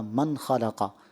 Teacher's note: यहाँ मन में गुन्ना नहीं करते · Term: इजहार